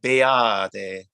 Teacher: even though there's a T there, we're not going to pronounce like a very t sound. It's almost a D, almost.